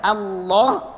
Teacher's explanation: Allah, a-nya a nggak boleh jadi o, Allah, alallah tidak boleh alallah, Allah, ya, ala, wallah tidak menjadi wallah.